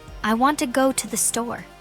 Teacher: In this sentence, want and store are stressed and the other words are said quickly and softly. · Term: Sentence stress, Sentence stress and intonation